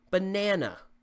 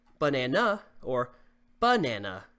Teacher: It's stressed on the second syllable. Banana. We don't say banana or banana. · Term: word stress